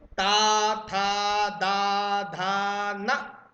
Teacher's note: ठीक है, ता, ता वर्ग को दंत कहा जाता है, क्योंकि ता वर्ग बोलते समय आपकी जीभ जाकर दांतों पर लगेगी।